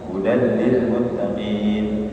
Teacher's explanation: tanwinnya tidak dibaca ya tidak dibaca langsung masukkan saja ke tasdid huruf lamnya · Hudal lil muttaqin, kemudian tanwin bertemu lam idgham bila gunnah, ya, masuk dengan tanpa gunnah, ya, jadi langsung hudal lil muttaqin.